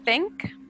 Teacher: Tink, your tongue is not touching your teeth. When you say think, your tongue come forward and touch your teeth.